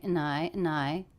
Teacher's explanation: dropped the D here connected this word and to I